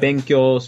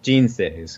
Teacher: benkyo's flat, jinsei's goes down.